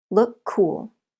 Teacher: C and K but the sounds are the same C so we link the words and they share the C Sound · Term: links